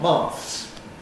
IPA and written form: mɑːθs (maths)